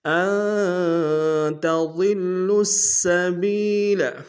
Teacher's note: گے، اور لام کو السبیلہ کے سین کے سامنے لائیں گے، سین کی سیٹی باریک ہوگی، سین کے اوپر تشدید زور دیں گے